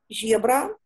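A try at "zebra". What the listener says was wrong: Ні, з, то звичайно з.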